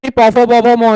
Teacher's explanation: ওষ্ঠ ব্যঞ্জনের ক্ষেত্রে খালি ঠোঁট কথা বলবে, জিভের কোনো কাজ নাই